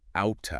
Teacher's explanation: When a T sound falls between two vowel sounds, like the T in out of is between the ow sound and the sound, it often changes into a very quick light D sound. So out of becomes outa. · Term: flap T